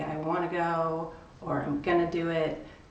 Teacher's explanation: So this is why we have reductions, like we say, I want to go, or I'm gonna do it. Going to becomes condensed because it doesn't hold very much content in the sentence.